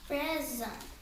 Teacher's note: And the accents on the first syllable.